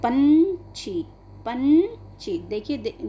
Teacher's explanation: जब आप इसको बोलेंगे तो केवल नाक के अंदर से एक ध्वनि निकलती है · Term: अनुस्वार